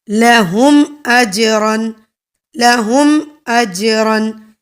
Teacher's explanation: جیم کو تھوڑا ہلا کے پڑھا جائے گا. جیسے اجرن، اگر ہم پڑھیں نا اجرن، اجرن، اجرن میں جیم ہلایا نہیں جا رہا، لیکن اجرن میں جیم کو ہلا کر پڑھا جا رہا ہے. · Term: کلکلا